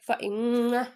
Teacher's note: میم مشدد کا غنہ کریں گے، ٹھیک ہے۔ آگے الف مدہ کریں گے، فَإِمَّا یَأْتِیَنَّکُم، اب یا حمزہ ساکن ہے، ٹھیک ہے۔